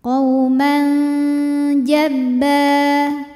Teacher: maka tanwin dibunyikan samar-samar, siap-siap menuju jim disertai dengung. Dengung dan samarnya sama. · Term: ikhfa Hakiki, ikhfa hakiki